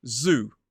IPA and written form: zuː (zoo)